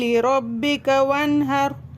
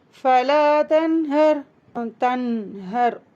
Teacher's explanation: சத்தம் வாய் வழியாவும் மூக்கு வழியாவும் வெளியேறும்